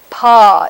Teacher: P is a bilabial but voiceless stop it's made with the tulips and without the vocal folds vibrating